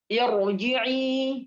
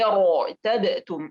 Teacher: ra sukun yang sebelumnya ada hamzah wasal maka dibaca tafkhim. Ya, walaupun hamzah wasal itu, ya, berharakat kasrah misalkan.